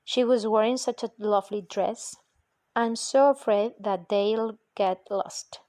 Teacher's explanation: the determiner such and the adverb so are stressed so as to give exclamatory force to a statement, question, or directive. In this usage, there is no accompanying correlative clause or phrase.